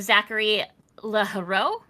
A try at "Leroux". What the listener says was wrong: Leroux. The H is silent. It's French.